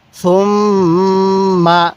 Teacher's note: নাকের বাঁশি দ্বারা গুন্নাহ করব কারণ মিমের নুনে তাজদিদ হলে গুন্নাহ করা ওয়াজিব হয়ে যায়